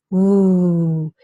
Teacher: So you round your lips, woo. So you restrict the airflow, but not enough to cause real friction. Woo. It's constricted, but it's not no friction. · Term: approximant